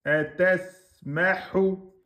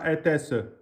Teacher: le sin soukoun, un temps et demi